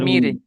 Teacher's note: র সাকিনের আগে জের এসেছে এইজন্য র কে বারিক করে পড়তে হয়